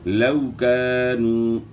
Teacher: الف مدہ واو مدہ کو ایک الف کی مقدار کے برابر آپ نے کھینچنا ہے